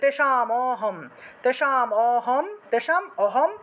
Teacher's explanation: করলাম, এই যে ম আছে না, ম উচ্চারণ করলে অ আসে, সেজন্য এই মটাকে হসন্ত হিসেবে আগের শব্দের সাথে উচ্চারণ করলাম, আর ময়ের যে অটা রয়ে গেল সেটা পরের অংশের সাথে উচ্চারণ করলাম।